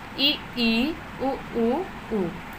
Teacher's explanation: संवृत जो होता है पूरी तरीके से मुंह बंद होता है हमारा। यहाँ से दोस्तों से होंठ जो होते हैं हमारे वो चिपके होते हैं और इन चीज़ों का हम उच्चारण कर सकते हैं, जैसे ई, उ।